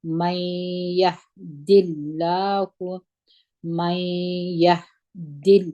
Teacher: یا مو په زور د ها سره وجنګول، ها باندې همس دی، دال په زیر د اسم جلاله د لام سره چې یو ځای کوو، اسم جلاله لام باریک ویل کېږي، او ها مو په پیښول کشوي نه.